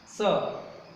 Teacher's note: स का उच्चारण स्थान लिखना दांत, दांत या दंत से यहाँ दंत भी लिख सकते हो और दांत भी लिख सकते हो।